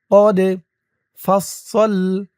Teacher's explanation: দাল কলকলার হরফ ধাক্কা দিয়ে পড়তে হবে